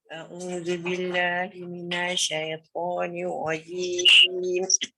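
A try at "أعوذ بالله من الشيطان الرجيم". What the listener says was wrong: Dia macam tak lekat tu. Minasya. Jangan minash. Minash. Bising.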